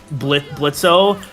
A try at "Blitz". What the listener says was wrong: Whoa, hold up, buddy! It's not Blitzo. The O is silent, stupid. That's the joke. Like, that's legit the joke. The O is silent.